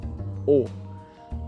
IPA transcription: o